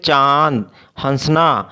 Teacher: अनुनासिका जैसे जिसको हम चंद्र बिंदु भी कहते हैं कि उच्चारण में हवा नाक और मुंह दोनों से निकलती है